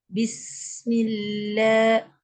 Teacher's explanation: Sebab sin saya baca lambat, sebab sin tu dia ada rakhawah.